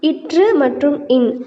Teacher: இற்று மற்றும் இன் ஆகிய 2 மெய்களும் மேல்வாயை நாக்கின் நுனி மிகவும் பொருந்துவதால் பிறக்கின்றன